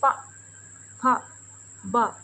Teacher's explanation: तो आप खुद महसूस करेंगे कि हमारे दोनों ओठ आपस में चिपकते हैं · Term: ओष्ठ